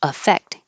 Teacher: And spelled the same with an A, but now the verb, the stress is on the second syllable. And because the A is not stressed, it will sound like I